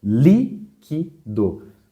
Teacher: Você vê que a sílaba cuja intensidade é maior é a antepenúltima. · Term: proparoxítona